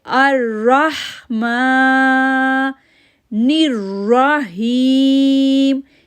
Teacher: را کو ہا کے ساتھ جوڑیں گے، میم کے اوپر کھڑی زبر ہے